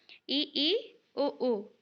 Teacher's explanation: के आधार पर तो मुखाकृति के आधार पर क्या-क्या है समृत वे स्वर जिनके उच्चारण में मुंह बहुत कम खुलता है मतलब हम मुंह को थोड़ा सा ही खुल के हम बोल